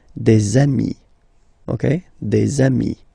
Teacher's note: Okay, and so you've got des ami, okay, and if you make the liaison, so the link between the two, you will get des amis, okay, des amis.